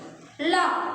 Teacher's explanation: ये जो ल वर्ण होता है बोलने पर इसके द्वारा ध्वनि हमारे आसपास के हिस्से से, जीभ के आसपास के हिस्से से निकलती है